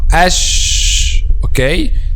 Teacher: the tongue is raised this letter will be heavy but if the back of the tongue is not raised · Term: light letter